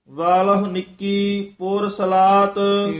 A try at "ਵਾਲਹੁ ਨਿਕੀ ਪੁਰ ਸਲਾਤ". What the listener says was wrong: ਇਹ ਵੀ ਪਾਠ ਵੱਖਰਾ ਕਰਨਾ ਪੁਰ ਸਲਾਤ ਇਕੱਠਾ ਨਹੀਂ ਕਹਿਣਾ ਹੈ